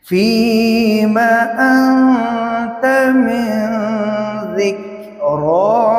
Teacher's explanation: اسی طرح سورۃ النبأ کی آیت نمبر 43، فیما انت من ذکراہا۔ فیما انت، نون ساکن کے بعد تا حرف اخفاء ہے تو نون ساکن میں اخفاء ہوگا، یعنی غنہ۔